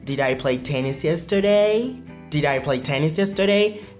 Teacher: parce que notre question commence avec did, notre intonation va monter